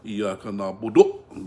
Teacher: if you stop with the Rome, you don't have the qalqala because you say the dhamma 1/3 of a harakat.